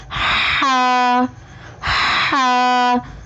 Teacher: ہا کی ادائیگی میں زبان کی جڑ کو حلق کی طرف مضبوطی سے دباتے ہوئے باریک اور رگڑ کھاتی ہوئی سانس میں پڑھیں